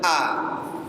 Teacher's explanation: Hamzah itu keluar dari tenggorokan bagian bawah. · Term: huruf hamzah